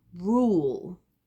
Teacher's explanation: the L at the end is quite quiet. I'm not really voicing it out very much, but if you were to try and do it both with the R sound at the back, doesn't really work.